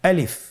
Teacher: আলিফে কিন্তু কোনো টান নেই, আপনারা বুঝতে পারতেছেন। আমি যখন আলিফ বলছি এর মধ্যে কোনো টান হবে না · আলিফ হরফটি মাখরাজ হলো আপনার মুখের শূন্যস্থান থেকে, গলা এবং মুখের শূন্যস্থান হতে আলিফ হরফটি উচ্চারিত হয়।